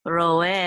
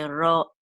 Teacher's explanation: So there'll be a slight pause between ro and e. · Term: guttural stop